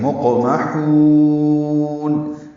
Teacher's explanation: میم کو جلدی سے پڑھیں گے اور ہا کو وسط حلق سے نکال کر لمبا کریں گے